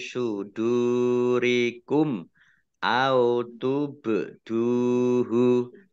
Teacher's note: mim sukun bertemu dengan huruf alif, bacaan izhar syafawi dibaca jelas